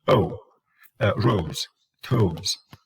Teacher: O, the diphthong, exaggerated, takes more time. You switch from one sound to the other, but each one becomes shorter.